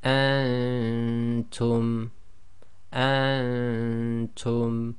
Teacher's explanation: till what you don't want to do is go and term the noon shouldn't be clear and that's caused by keeping your tongue in the position of the next letter